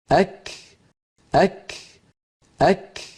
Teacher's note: کاف کا مخرج زبان کی انتہا سے ہے، لیکن ساتھ تالو کا نرم اور سخت حصہ بھی، یعنی جس جگہ ہڈی والا تالو اور گوشت والا تالو ملتے ہیں وہاں زبان کی انتہا کو لگائیں گے قاف کے مخرج کے قریب، تو کاف ادا ہوگا۔